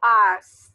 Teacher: termina un sonido y cuando usted se toca las cuerdas vocales, no vibra. Es un sonido que no vibra.